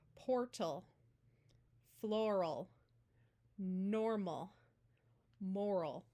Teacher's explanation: floral normal moral you could see that in all these words rather than a clear Al sound we have a muffled l sound